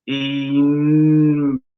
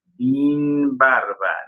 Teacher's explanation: Ese fenómeno se llama vocalismo. El sonido de la A cerró un grado porque repercutió sobre esa A el sonido de la I de la sílaba anterior.